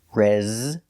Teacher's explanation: the s is pronounced with a zebra sound z with a voice · Your first syllable is stressed, resume, using the short S sound like egg and bed, re. The S is pronounced with the zebra sound, z with a voice, res. The second syllable is pronounced reza.